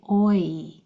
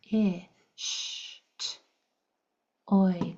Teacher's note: it's called a diphthong, where it changes from the beginning to the end of it. Your mouth changes shape a little bit. Sometimes you can count that as one sound, especially when you're learning how to spell that sound.